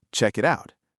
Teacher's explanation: Three phrases and in every single one the words melted into each other instead of standing apart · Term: linked